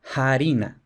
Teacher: en la Edad Media se escribiera también con f, pero que se pronunciara harina, con aspiración